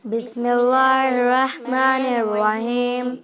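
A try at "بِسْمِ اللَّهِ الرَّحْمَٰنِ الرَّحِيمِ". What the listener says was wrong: ایک بسم اللہ میں جو آپ کی مسٹیک ہو رہی ہے، میں سن رہی ہوں لفظ اللہ جو اس میں آ رہا ہے بسم اللہ، اس کو باریک پڑھیں گے، موٹا نہیں پڑھیں گے۔ زیر، جب لفظ اللہ کے ساتھ زیر آتی ہے تو اس کو باریک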